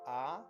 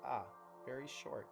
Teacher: the one that looks like a T is a long vowel, ah, and the one underneath the resh is a short vowel, ah, very short